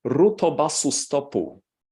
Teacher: If you want to simplify your task, that's the last item here, epenthesis. That is the insertion of a tiny vowel, imagine a schwa, in between the consonants to break up the cluster · he was inserting vowels after the final consonants to break up the syllables and to make them open syllables. And everyone understood what he meant.